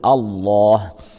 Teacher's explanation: في الآية التي تليها الله لفظ الجلالة، إذا ابتدأنا به نبتدأ به بهمزة قطع مفتوحة، فنقول الله. لام لفظ الجلالة هنا مغلظة، تفخم ويفخم الألف بعدها